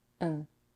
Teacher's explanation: she reduces the vowel to a schwa and drops the final consonant D